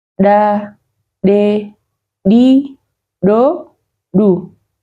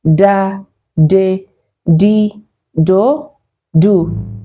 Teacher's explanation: The first one is kinda smooth, but the second one has some force and a burst of air. So we have da, which is kinda soft, and we have da with the force or the burst of air.